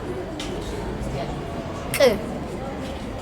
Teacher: We have another ejective, the velar one.